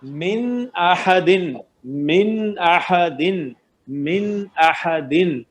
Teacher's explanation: اظہار ہوگا من احدن, من احدن, من احدن. نون ساکن کو اس کے مخرج سے پڑھیں گے, بالکل غنہ نہیں کریں گے